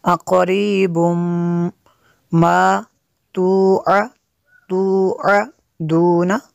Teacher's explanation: تنوین کے بعد میم ہے حروف ارمال ان میں سے، یہاں پہ ادغام ہوگا اس لیے یہاں پہ غنہ کریں گے۔